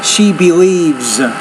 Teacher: Again, that's third person singular with the S. And it sounds more like a Z because it comes after a voice consonant